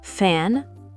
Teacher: Ici, l'air frotte de manière continue pour créer un cicelement. Pour le F, les dents du haut touchent la lèvre inférieure.